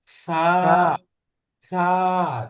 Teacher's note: জিহ্বার আগা উপরে, দাঁতের আগার সাথে থাকবে